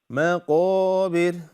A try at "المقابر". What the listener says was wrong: مقابر. It's not مكابر, it's مقابر.